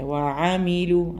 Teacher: ഐന് തൊണ്ടയുടെ അക്ഷരമാണ്